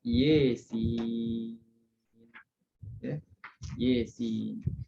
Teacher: rauh dia imalahkan huruf ya pada Yasin. Kita baca Yasin, kalau nak baca rauh kita akan imalah lah.